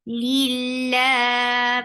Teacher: Lafz jalala will be light here because you find kasra before it.